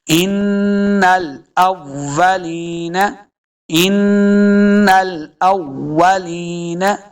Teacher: یہ یا مدہ ہے، اس کو دو حرکات لمبا کریں گے، نون کو لمبا نہیں کرنا